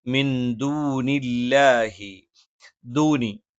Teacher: ദ നാവിന്റെ അറ്റം മേലെ മുൻബല്ലിന്റെ മുരട്ടിലാണ്